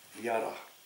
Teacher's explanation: Jara muss dann hinten lang gesprochen werden